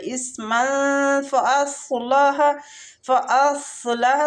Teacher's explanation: سواد مستعلیہ پور پڑھیں گے